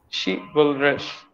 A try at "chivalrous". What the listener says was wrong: Yes, not rush, rus. Yes, so now when you pronounce it, it would be chivalrous. Yes, chivalrous. Yeah, she is one syllable, vul is the second syllable, rus is the third syllable. Chivalrous.